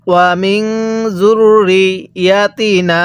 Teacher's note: এই যে নুনের মধ্যে আমরা ৩ আলিফ টান দিব, কারণ মদের হরফের উপর যখন এরকম চিকন চিহ্ন এরপরে এরকম লম্বা হামজা দেখব তখন আমরা সেখানে ৩ আলিফ টান দিব।